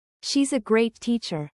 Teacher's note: You're using a flat tone and maybe even a slight downward inflection at the end to imply the opposite of what you're saying. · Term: sarcasm